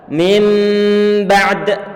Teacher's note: maka suara nun sukun ataupun tanwinnya diganti dengan suara huruf mim. Berarti nanti mimnya juga dalam keadaan sukun karena dia menggantikan nun yang sukun.